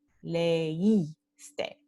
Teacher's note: Entonces, por eso este hiato es decreciente, porque vamos a tener que cerrar la boca para pronunciar leíste. The mouth is going to have to close a little to go from E to I. Entonces es un hiato decreciente.